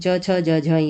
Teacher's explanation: तालव्य में तालु और जीभ के स्पर्श से बोलते हैं